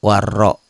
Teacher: Ini ro-nya tebel karena barisnya di atas.